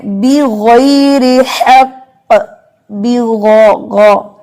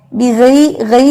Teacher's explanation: تو غین جو ہے اس میں بھی استعلا ہے, زبان اوپر اٹھا کے پڑھا جاتا ہے